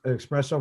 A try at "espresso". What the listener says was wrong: There's no X in espresso. It's ES. You said espresso. You should be saying espresso.